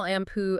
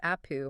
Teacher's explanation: n sound followed immediately by a harder consonant like a pe, the n sound just sort of drops out in everyday speech. >> Yeah, it drops out and then the subsequent consonant doubles up to compensate for it. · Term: assimilates